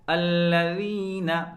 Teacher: ذال کا مخرج زبان کی نوک سامنے والے دانتوں کے سرے سے لگا کر لفظ ذال ادا کرتے ہیں